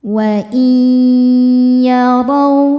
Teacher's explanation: nun ini masuk ke ya disertai dengungan. Wa iyarau, ra dibaca tafkhim karena berharokat fathah. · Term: idgham bil gunnah